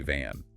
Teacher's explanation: V involves your teeth touching your bottom lip